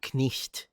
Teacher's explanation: a word like night would have been pronounced knicht. So the K was still pronounced, which is why you still spell it with a K.